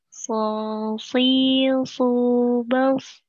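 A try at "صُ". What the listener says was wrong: Masih nyasar ke hidung ini tebalnya.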